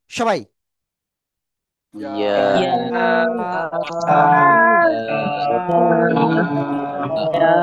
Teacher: জিব্বার মধ্যখান উপরের তালুর সাথে লাগিয়ে উচ্চারণ করতে হয়, এক আলিফ টান।